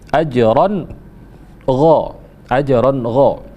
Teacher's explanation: Ron ghai itu ada fathatain bertemu dengan gha, maka berlakulah hukum izhar. Izhar artinya jelas, ya. Jelas, dibaca jelas, berarti tidak boleh ada yang dipanjangkan.